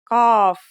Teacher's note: Think about the word call and notice how it comes from deep in the throat. It's a stronger version of the letter K, said with the throat constricted